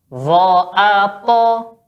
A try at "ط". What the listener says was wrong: Ya, masih belum naik pangkal lidahnya.